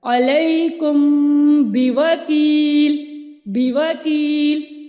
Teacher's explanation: دونوں ہونٹوں کو میں نے کھلنے سے پہلے ہی جو تری والا حصہ ہے وہاں سے میں نے با کو سختی سے ادا کیا